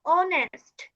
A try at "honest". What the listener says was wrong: অনেস্ট, not হনেস্ট, ওকে? হ্যাঁ সেটাই, মানে হনেস্ট বলবো না আর কি।